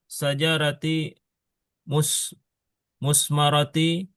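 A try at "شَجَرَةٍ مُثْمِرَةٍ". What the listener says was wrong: Itu kan nakiroh. Itu nakiroh. Itu nakiroh. Tanwinnya jangan lupa. Syajaratin musmiratin.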